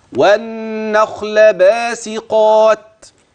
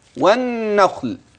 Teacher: والسين في باسقات لا تتحول الى صد